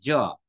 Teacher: জীবের অগ্রভাগ তালুতে চলে যাচ্ছে